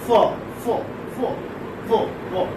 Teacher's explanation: Fa is a voiceless labiodental fricative